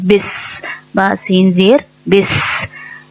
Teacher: زیر کی با کے نیچے زیر ہے، زیر کو جلدی اور نرمی سے ادا کیا جاتا ہے، تو ہم اس کو جلدی سے ملائیں گے اور سین میں سیٹی آئے گی، اس کو واضح کریں گے